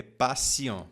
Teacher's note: Faça atenção nessa palavra patient, porque o T ele vai ter o som de S.